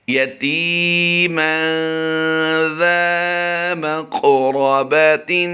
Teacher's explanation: یاد رہے تا یا زیر تی کو ہم لمبا کر رہے ہیں، زال الف زبر زا کو لمبا کر رہے ہیں، اور باقی کسی کو لمبا نہیں کر رہے۔ قاف کی ادائیگی میں ہم نے پر بھی کرنا ہے اور قلقلہ بھی کرنا ہے۔